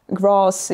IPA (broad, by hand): grɑːs